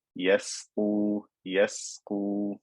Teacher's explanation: Don't make it fat because right after it is a fat letter. But we need to make sure we emphasize the thinness of the seen.